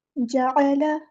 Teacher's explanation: جعل، جیم کو باریک پڑھنا ہے، عین کو وسطی حلق یعنی مڈل تھروٹ سے ادا کرنا ہے